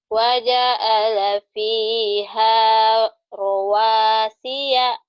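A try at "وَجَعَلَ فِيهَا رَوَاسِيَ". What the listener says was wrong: ainnya nggak keluar. Keluarin ainnya.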